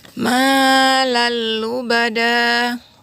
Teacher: Tanwin bertemu dengan huruf lam, jadi tidak perlu dikasih dengungan. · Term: idgham bila gunnah